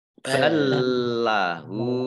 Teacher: lam sukun bertemu dengan huruf lam, ini idgham mutamasilain. Yaitu masuk ya dengan huruf yang sama.